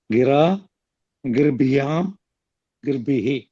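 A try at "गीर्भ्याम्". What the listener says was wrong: గీర్భ్యాం దీర్ఘం అది గీ ఉంటుంది. గిరా గీర్భ్యాం గీర్భి. గీర్ గిరా గీర్భ్యాం గీర్భి. గిరాకు లేదు. గీర్భ్యాం వివచన బహువచనాలు. దీర్ఘ- కాదు ద్వివచనాన్ని కూడా.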